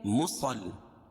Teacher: صاد کو موٹا پڑھیں گے، تشدید ہے لام کے اوپر، صاد کو لام میں ملائیں گے پھر لام کو یا میں ملائیں گے.